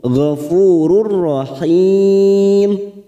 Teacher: bertemu dengan ro namanya bacaan Idam bila gunah karena ada tanwin cuma tanwin bertemu dengan huruf ro hanya masuk tanpa ditekan tanpa mendengung gofururahim rahim matad Ari tis sukun empat harakat kita panjangkan ya